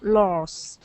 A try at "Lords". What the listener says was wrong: You're kind of missing the D sound. Lords. Lords. Well, I'm not hearing the D, like dog. Duh.